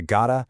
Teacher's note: Notice how that hard T sound basically just vanishes across the board? It lets the words flow together without you having to stop the breath in your mouth.